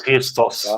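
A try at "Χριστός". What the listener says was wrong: Isso. É isso mesmo.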